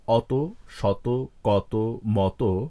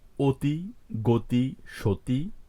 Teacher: এখানে প্রতিটি অই ও বা ওকারের মত উচ্চারিত হয়েছে